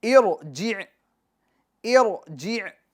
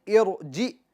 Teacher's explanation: یہ عین کی آواز درمیان حلق سے آپ کو نکالنی ہوگی۔